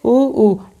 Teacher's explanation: मतलब छोटा ऊ और बड़ा ऊ का उच्चारण स्थान क्या होगा? ओष्ठ।